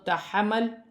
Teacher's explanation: ہا کو اپنے مخرج سے ادا کیا جائے گا اور میم کو لام کے ساتھ ملا کر پڑھا جائے گا